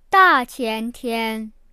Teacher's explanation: 大, the fourth tone, you can add it in front of 前天 or 后天